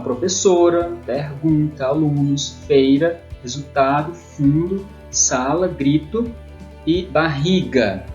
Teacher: São as palavras onde a sílaba tônica, a sílaba forte, é a penúltima.